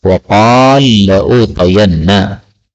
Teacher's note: lam ketemu lam boleh idgham menjadi waqala la'utayanna